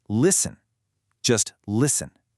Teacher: In listen, the T is silent.